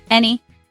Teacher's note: It is a two-cllable word. Stress is on the first syllable.